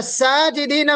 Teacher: साजना में हमारी आवाज मोटी नहीं हो रही अलिफ निकालते वक्त क्यों क्योंकि अलिफ से पहले जो सन है वो हर्फ इस्तफा